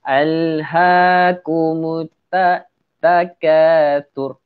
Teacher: Sebutan dia terlampau keras. Kita tak nak sebutan ta tu terlampau keras. Sebab sebutan dia adalah, sifat dia adalah tawasud, iaitu sederhana.